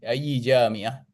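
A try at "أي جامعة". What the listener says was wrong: Ayyu bukan ayy. Ayyu.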